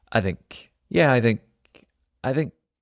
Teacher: it's another example where the th really really shortens and becomes So Soft